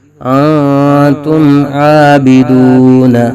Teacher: میم ساکن کے بعد حروف با اور میم کے علاوہ عین آ رہا ہے تو میم ساکن میں اظہار شفوی ہوگا